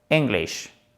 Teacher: English, qui est plus nasal, plus puissant. Ça, c'est l'American English, l'accent à l'américaine